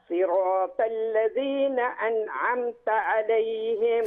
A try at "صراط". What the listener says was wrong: خلي بالك من الطاء، صراط، ما نقولش صراط، صراط، طاء.